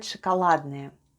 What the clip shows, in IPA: shakaladnaye